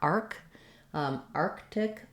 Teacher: our arc syllable is stressed. It's going to be longer.